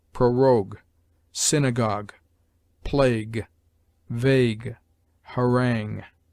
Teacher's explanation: ue is sometimes mute at the end of a word, in imitation of the French